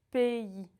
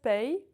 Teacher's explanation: When you see A and Y together, it makes the sound EI. And you need to emphasize the E a little bit. Pays. So it's not pay or paix, it's pays.